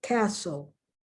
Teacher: There's a T there, but you don't hear it. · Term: silent T